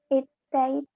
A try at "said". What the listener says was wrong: Said. Said. Ok, no pronunciamos la I, no pronunciamos say, como si fuera una E, said. Ok, this is the pronunciation of the past for this verb. Say, said.